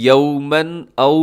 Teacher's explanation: تنوین کے بعد حمزہ ہے تو یہاں پہ ہم کریں گے اظہار، اسے کہا جاتا ہے اظہار حلقی